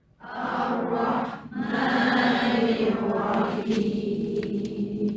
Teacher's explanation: Ra tebal, ha pedas ada dan ra pada kalimah Ar-Rahim pun tebal tafkhim.